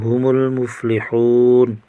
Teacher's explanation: واو ساکن پر واو مدہ، ایک الف کھینچیں گے